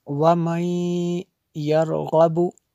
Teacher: نون ساکن کے بعد یا حروف یرمالون میں سے ہے، تو اس لیے یہاں پہ جو ہے ادغام ہوا ہے